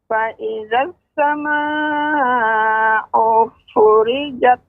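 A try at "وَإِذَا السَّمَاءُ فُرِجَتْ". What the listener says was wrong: U-nya dibaca dengan pendek, Nek. Wa idzas samaa'u furijat.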